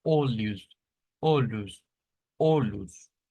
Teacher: es nuestra l una l en la zona del alvéolo pero esa es una l que es más en el palato o sea vamos más hacia atrás · Es una especie de L. Em, es una L que se suele hacer en el portugués y a la L se le suma como un sonido de una I. O sea, esto lo vamos a pronunciar como olhos, olhos, olhos.